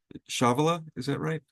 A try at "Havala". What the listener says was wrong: it's havala the C is silent